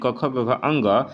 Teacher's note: इन सभी का उच्चारण स्थान कंठ होता है। कंठ का मतलब होता है जो गले के पास है, ठीक है ना।